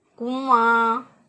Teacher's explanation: ناک میں آواز جب لے جائیں تو نون کی ادائیگی پھر یہاں پر نہیں ہوگی. ہم نون گنہ جس طرح کے اردو میں پڑھتے ہیں کنواں، واو زبر ف وا نون گنہ کنواں، تو اسی طرح ہم اس کی آواز بھی کر کے ادا کریں گے.